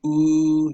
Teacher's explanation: As when you say ooh, you can see how there's rounding of the lips and your lips come out.